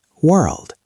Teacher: You have the R pulling back and the L lifting up.